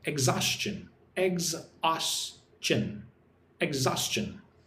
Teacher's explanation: 3 syllables. Put the stress on the second syllable.